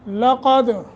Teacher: لقد قاف کو موٹا، دال پہ قلقلہ